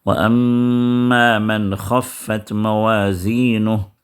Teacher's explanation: نون کے بعد خا آ گیا جو حروف اظہار میں سے، حروف حلقی میں سے ہے، تو لہٰذا یہاں پر نون کو ظاہر کر کے پڑھیں گے ، یہاں پر اخفا نہیں کریں گے، جیسے من ثقلت میں